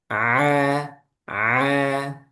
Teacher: Dia keluarnya dari tengah tenggorokan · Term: huruf ain